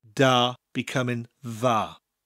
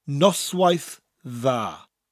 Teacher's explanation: Rather than a D sound, a D sound, it creates a TH sound, as in the English word them.